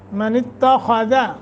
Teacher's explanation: خا موٹا کرنا ہے، ذال کو موٹا نہیں کرنا مگر ذال۔ من اتخذ یہ غلط، من اتخذ لمبا بھی نہ ہونے پائے، مجھول بھی نہیں، معروف۔